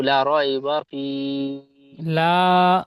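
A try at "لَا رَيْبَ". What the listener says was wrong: লামটি আলিফ মাদ্দা একালিফ টান হবে।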